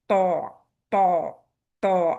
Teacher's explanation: त के लिए क्या है? Tip of the tongue. आपके ऊपर के दांतों के गम पे लग रही है। लेकिन साथ-साथ त में इस्तेला भी है और इतबाक भी है। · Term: हैवी त